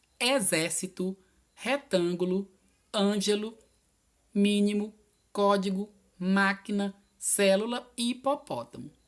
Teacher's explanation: são as que a antepenúltima sílaba é a mais forte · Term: proparoxítonas